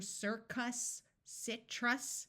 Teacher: Did you notice in these two words it was not a clear circus, citrus? The short U sound may have sounded muffled and more like a short I. In unaccented syllables, the vowel sounds often change to what we call a schwa, which is a muffled sound that can sound like a short U or a short I.